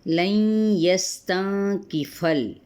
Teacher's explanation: سین پہ سیٹی کو واضح کریں گے